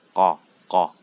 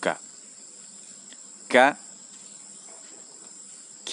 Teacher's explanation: huruf Kaf dia mengeluarkan udara karena ini yang untuk membedakan mana huruf Kaf mana huruf qof